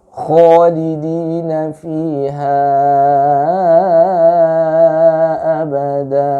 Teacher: Kho itu terdengar suaranya menebal karena dia berkumpul di tengah-tengah mulut, ya, di tengah-tengah rongga mulut. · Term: isti'la